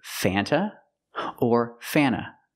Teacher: Sometimes you don't hear the T because you have NT between vowels.